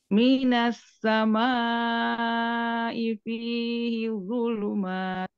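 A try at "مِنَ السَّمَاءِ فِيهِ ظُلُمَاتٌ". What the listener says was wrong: Mat. Panjang ya.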